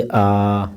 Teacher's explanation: इसमें मुंह जो है पूर्ण रूप से खुला हुआ है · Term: विवर्त